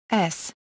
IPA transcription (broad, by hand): s